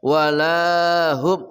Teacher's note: ha dari pangkal kerongkongan